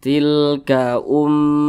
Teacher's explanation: didengungkan itu suaranya itu kita tahan kita panjangkan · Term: gunah musyaddadah